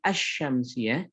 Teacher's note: Kenapa dinamakan dengan alif lam syamsiyah? Karena ketika kita mengucapkan asy-syamsiyah, maka lamnya melebur kepada sya, maka dia disebut dengan alif lam syamsiyah, yaitu yang kemudian dilebur lamnya ke dalam sya.